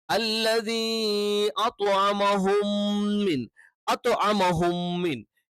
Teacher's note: നാവിന്റെ മുകൾ ഭാഗത്തോട് ചേർന്ന് കിടക്കുന്ന അറ്റം മേലെ വലിയിലെ രണ്ട് മുൻപല്ലുകളുടെ മോണയോട് ചേരുന്ന ആ ഭാഗത്ത് ടച്ച് ചെയ്തുകൊണ്ടാണ് നമ്മൾ ത്വ എന്നുള്ള ഉച്ചാരണം പറയുന്നത്.